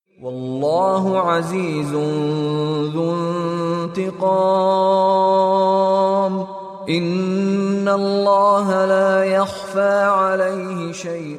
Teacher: L'emphase, qu'on appelle tafrim en arabe, sur le nom de Dieu est obligatoire et obéit à des règles strictes. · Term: L d'Allah